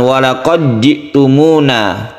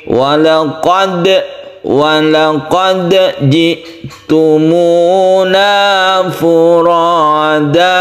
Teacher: Ada orang yang membaca dal bertemu dengan jim ini dibaca sebagai idgham atau dimasukkan, padahal dia itu terpisah ya. Huruf dal dan jim ini sifatnya berbeda dan dia itu tidak idgham. Oleh karena itu ini tetap dikolkolahkan. Membacanya bukan walaqad ji'tumuna, tapi walaqad ji'tumuna furada.